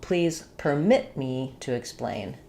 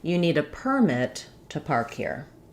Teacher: verb having second syllable stress and noun having first syllable stress